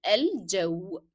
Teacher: in الجو we pronounce the sound of lim because it is carrying that sukun, which is a tiny circle above the letter, and then it is not followed by a shadda letter.